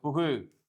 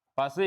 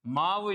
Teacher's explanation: வல்லின அல்லாத உகரங்கள் எப்போதும் என்ன செய்யும், முழுமையாக ஒலிக்கும். இவ்வாறு ஓசை குறையாமல் ஒரு மாத்திரை அளவில் முழுமையாக ஒலிப்பதை முற்றியல் உகரம் என்பர்